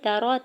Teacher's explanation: تا کے زبر کو را کے زبر کو بغیر کھینچے ہوئے ادا کرنا ہے۔